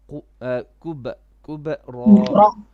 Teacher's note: you're doing qalqala, which is good, but you need to make it flat. Not quba, but kub, ra.